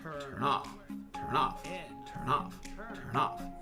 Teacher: The N in turn merges directly into the O of off, making it turn off, turn off, turn off, turn off. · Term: merging